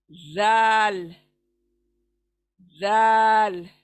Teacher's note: थोड़ा जबान बाहर आएंगी, थोड़ा जबान बाहर आएंगी, चौड़ी हो जाएंगी और दांतों को किनारे से लगेगा